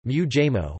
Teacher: Preceding an approximant, the /n/ is completely assimilated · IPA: [muʋːɑjmo]